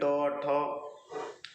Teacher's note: मूर्धा, जब आप इनको बोलते हैं तो आपकी जुबान मुड़ती है, ट ठ, जब आप बोलेंगे तो आपकी जुबान जो है कि मुड़ जाती है, उसी को कहते हैं मूर्धन्य, ठीक है।